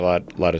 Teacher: the T for lot is a flap t d which then joins with the preposition of but again the preposition of is reduced to another sound so